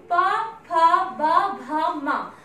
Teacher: जब ये वर्णों का हम उच्चारण करते हैं तो हमारे जो होठ हैं आपस में मिलते हैं और ओठ का मिलना ही इनका उच्चारण स्थान तभी होता है।